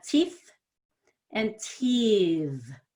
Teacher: the first one ends in a voiceless TH.